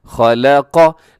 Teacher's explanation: खौ ज़बर खौ, लाम ज़बर ला, कौफ ज़बर कौ, खलक़। लाम को बारीक रखना है, खा और कौफ को मोटा रखना है, और बहुत एहतियात के साथ कि इसको पढ़ते वक्त कहीं लाम भी मोटा ना हो जाए।